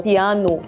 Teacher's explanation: For a Brazilian in Portugal, when the word ends with O, sometimes we pronounce as U, so piano. The P pronunciation in Spanish is a little bit more stronger, maybe.